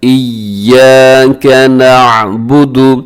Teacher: ایک تو مضبوطی کے ساتھ پڑھنا ہے، دوسرا اپنے یا کو تھوڑا سا لمبا بھی کرنا ہے، کیونکہ یا کے ساتھ الف بھی آپ کو نظر آ رہی ہے، تو آپ تھوڑا سا لمبا کیجیے گا، مضبوطی کے ساتھ پڑھتے ہوئے لمبا کیجیے گا. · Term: تشدید